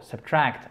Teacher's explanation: To subtract, subtract, ok, c'est un à court. Subtract, accent tonique sur la deuxième syllabe